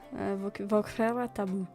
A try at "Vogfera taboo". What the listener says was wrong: You don't have to overpronounce the R.